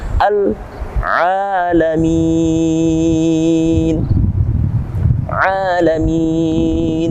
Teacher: Di sini ada mad tabi'i. Mad tabi'i yang berada pada akhir kalimat atau waqaf di akhir ayat. Kita bisa baca 6 kali, 4 kali, ataupun cukup 2 kali.